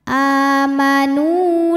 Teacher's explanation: cara bacanya adalah Nun panjang dua harakat amanu la la hukumnya adalah Mad Thobi'i ziri sebab ada Alif